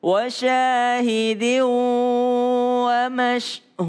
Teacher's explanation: tanwin ketemu dengan wau ya berdengung